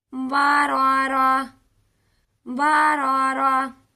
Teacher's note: اس پر ہم لاسٹ پر ہا کا ہی ساؤنڈ نکالیں گے، اس تا کو ہا ہی پڑھا جائے گا، بے شک یہ تا آ جائے یا پھر خالی آ جائے، اسے ہم ہا کی ہی آواز نکالیں گے۔